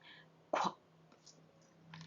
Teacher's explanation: ಇಲ್ಲಿ ಖೇಗೆ ಆಸ್ಪಿರೇಷನ್ ಕೊಡೋ ಅವಶ್ಯಕತೆ ಇಲ್ಲ.